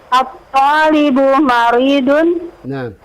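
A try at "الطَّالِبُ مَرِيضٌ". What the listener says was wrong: Nah, itu intonasinya. Intonasi jangan seperti intonasi pertanyaan. Jangan grogi, tenang saja. At-talibu maridun.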